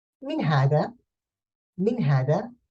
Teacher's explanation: the a sound changes to an e sound, means fatha becomes a kasra